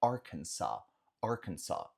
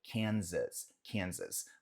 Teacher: Aqui é Arkansas, não tem o som de Z